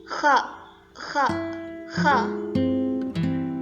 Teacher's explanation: Kha ini memiliki sifat hamas dan rokhawah, mendesis dan suara tidak tertahan.